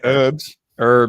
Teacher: in America you don't pronounce the h